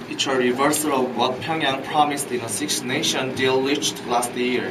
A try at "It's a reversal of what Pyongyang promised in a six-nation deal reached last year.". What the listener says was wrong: Good job.